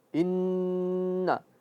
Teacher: Ya. Nun atau nun bertasydid dia gunnah dan khayshum.